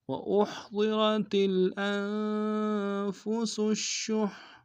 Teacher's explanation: والصلح خیر وأحضرت الأنفس الشح، وأحضرت حمزہ کو ہا کے سامنے آئیں گے، ہا کو گہرائی سے ادا کریں گے، ضاد کو موٹا ادا کریں گے، را کو موٹا ادا کریں گے